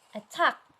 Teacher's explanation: These 2 words have syllables which are stress and you can find it at the second syllable.